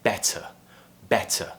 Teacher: I'm pronouncing that T very, very clearly